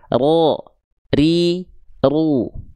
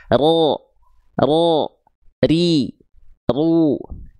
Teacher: Takrir itu artinya bergetar tapi bukan getaran yang terlampau berlebihan. Sebagaimana kita melafalkan huruf R.